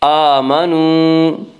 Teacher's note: آمنوا، واو مدہ وہ واو جو ساکن ہو اس سے پہلے پیش ہو، واو مدہ کو 1 الف کے برابر کھینچ کر پڑھیں گے